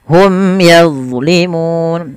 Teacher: ada bacaan izhar syafai karena bertemu dengan huruf ya harus jelas Suara mimnya